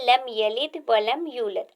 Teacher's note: ये सारे लाम बारीक पढ़े जाएंगे, क्योंकि लाम लफ्ज़ अल्लाह का नहीं है